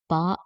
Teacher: പ എന്ന് പറയുമ്പോൾ നമ്മൾ 2 ചുണ്ടും എന്ത് ചെയ്യുന്നുണ്ട്? ഒരുമിച്ച് അടയുന്നുണ്ട്. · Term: ഓഷ്ട്യം